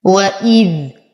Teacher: وإذ نتم كسرة الهمزة مع التحقيق، نصبر على الذال فهو حرف ساكن لثوي رخو